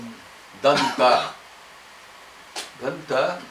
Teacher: because the tongue is really touching the top teeth it's called Dental you see the tip of the tongue touching the top of